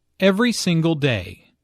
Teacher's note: Notice that each word here is stressed. The speaker wants to make a point, so she emphasizes each word equally.